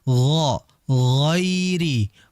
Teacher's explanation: huruf ghain ini merupakan huruf yang keluar dari tenggorokan bagian paling atas